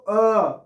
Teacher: जब आप अ बोलते हैं तो अ आपके आगे नहीं आ रहा पीछे नहीं आ रहा केवल बीच में आ रहा